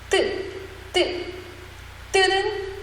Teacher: 뜨는 뭔가 긴장이 되죠? 하지만 거칠진 않았어요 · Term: 된소리